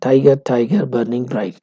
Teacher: ٹائی اور بر اور برائٹ یہ اسٹریسڈ ہے، تو پہلا اسٹریس ہے، گر انسٹریسڈ ہے۔ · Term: trochaic line